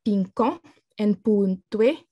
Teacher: you have a non-heavy syllable at the end receiving stress